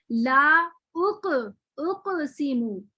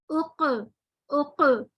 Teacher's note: जब हम पढ़ेंगे ला उक सीमू, तो देखें उक पढ़ते हुए जो हलक का जो हमारा जो हलक जबान का जो आखिरी हिस्सा है, अक्सा लिसान ऊपर के तालू से मिल रहा है, नरम तालू से, और मिलते ही फौरन हटा है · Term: तबाउद